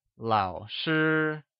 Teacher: Lao is pronounced with a falling rising tone while sure is pronounced with a high level tone